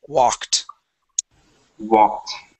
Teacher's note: Okay, it ends with a K sound. When it ends with a K sound, that ED also makes a T.